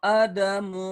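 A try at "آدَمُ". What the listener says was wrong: A-nya panjang. A-nya panjang ada berarti. Panjang.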